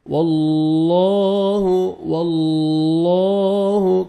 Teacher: اللہ سبحانہ و تعالیٰ کے نام سے پہلے زبر اور پیش آئے گا تو لام کو موٹا کریں گے اور پر کریں گے, زیر آئے گا تو باریک کریں گے. · واللہ کھڑا زبر ہے, 1 سیکنڈ لام کو کھینچنا بھی ہے